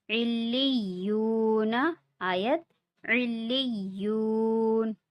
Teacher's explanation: واو ساکن سے پہلے پیش ہے، تو اسے بھی ایک الف کے برابر کھینچ کے پڑھیں گے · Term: حروف مدہ